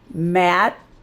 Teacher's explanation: We're not stressing that t sound. Matt, we're not making it really loud, but it's there.